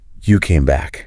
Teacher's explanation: his voice shot up at the end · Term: intonation